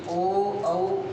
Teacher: ओ औ इन दोनों वर्णों का उच्चारण स्थान कंठ और होठ दोनों मिलकर ही करते हैं, इसलिए इनको कहा जाता है कि ओ औ इन दोनों वर्णों का उच्चारण स्थान कंठोष्ठ में होता है।